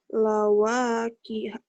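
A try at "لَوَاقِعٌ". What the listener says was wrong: Lawaqi'a bukan ha ya, ain.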